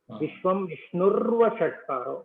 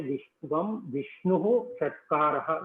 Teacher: Vishnuhu and Shatkara becomes Vishnurva Shatkara. It becomes R because of Sandhi.